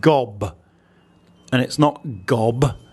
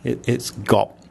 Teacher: a B final consonant sound doesn't exist in Thai